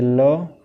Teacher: પાર્શ્વિક વ્યંજન એટલે શું? તો જીભની બંને બાજુથી હવા નીકળે એને પાર્શ્વિક વ્યંજન કહેવામાં આવે છે